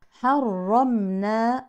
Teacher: الراء مشدده بالفتح مفخمه كالرا المفتوحه تماما والميم ساكنه مظهره اظهار شفوي · المفتوحه تماما والميم ساكنه مظهره اظهار شفوي اتت في وسط الكلمه ننتبه هنا لترقيق الحاء لا تفخم